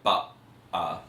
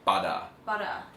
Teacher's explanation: that's a glottal stop, so they're saying butter, which is different to the flap of the tongue when you say butter